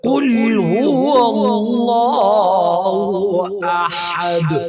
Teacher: تو وقف کی وجہ سے دال کو ساکن کریں گے، اور دال جب ساکن ہو جائے تو وہ اس پر قلقلہ کیا جاتا ہے